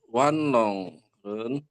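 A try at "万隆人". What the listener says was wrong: Wung jadi O-nya dibaca agak u ya.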